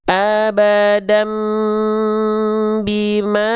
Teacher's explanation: Dua harakat dibaca samar dengung ya. · tahan dua harakat karena ada dengung di sana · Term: iqlab